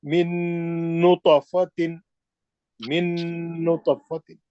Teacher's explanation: آپ ساکن کو چھوڑ کے سیدھا مشدد میں جا کے غنہ کر کے تو کا خلخلہ اچھا کر کے جائیں گے